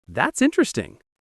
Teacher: say it with a slight rise and warmth